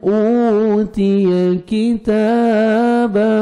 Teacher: کاف کو باریک پڑھنا ہے، تا کو 1 سیکنڈ کھینچنا ہے، کھڑا زبر ہے ، الف مدہ کے قائم مقام ہے، ایک الف کے برابر